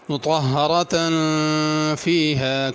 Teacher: مطہرہ کو اگر ملا کے پڑھیں گے تو پھر تا پہ غنہ بھی ہوگا